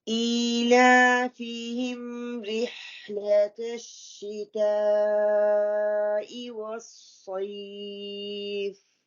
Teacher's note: صاد heavy ہے اور یا سے پہلے زبر آ رہی ہے تو یہ لین مد ہو جائے گی، مد عارض السکون 4 اور 5 کاؤنٹ.